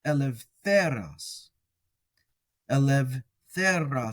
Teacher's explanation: And then just remembering that when we have an epsilon upsilon vowel pair, that's different. It makes an ev sound.